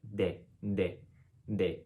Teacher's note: the letter d in spanish is actually a bit further front than you would expect it to be so the tongue is almost in between the teeth when you say and it's lighter than our english d d